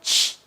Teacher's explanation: son 2 letras que representan al único sonido ch, al africado ch.